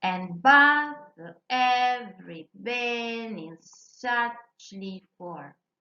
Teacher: So this means that the lines are composed of 10 syllables. So there are 5 feet following the stress pattern, unstressed, stressed. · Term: iambic pentameters